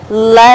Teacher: consonant are when the tongue loocks the middle of the mouth so the air has to pass through the sides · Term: lateral consonant